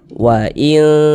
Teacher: kita tahan suaranya kita panjangkan sejenak kira-kira sepanjang dua harakat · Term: didengungkan